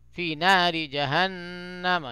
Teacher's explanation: یعنی آواز کو ناک میں تھوڑی دیر رکیں گے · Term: غنہ